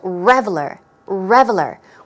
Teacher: stress goes on the first syllable